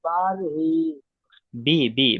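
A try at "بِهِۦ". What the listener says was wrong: বাজের কি উচ্চারণ হয়, বি হয়, বাজের বি, হা খারাজের হি, বিহি, বাহি নয়, বিহি, বিহি।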